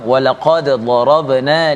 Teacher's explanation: Ya, kalau kita lihat huruf dal ini bila mati, bila sukun, kita perlu bacanya dengan qalqalah, ada letupan pada huruf dal yang mati. Kemudian berjumpa pula sebelahnya adalah huruf dad, ya.